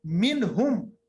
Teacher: एक और मिसाल है मिनहुम, मिनहुम नून की आवाज निकाल के आगे बढ़ गए, जाहिर की नून की आवाज को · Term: इजहार